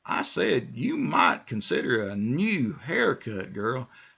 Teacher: my voice is getting uh higher in pitch and I'm you know I'm saying the words more strongly